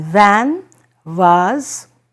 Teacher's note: It's different, say, from water or watch, which is again a V sound, but this is basically a sound where you find that it is labiodental